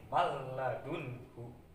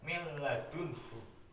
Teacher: memasukkan lam ke nun matinya tanpa disertai dengung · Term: idgham bilahunah